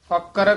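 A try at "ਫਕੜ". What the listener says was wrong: फक्कर कस के बोलना है, फक्कर करे और जात गवाए।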